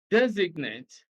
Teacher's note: designate stresses on the first syllable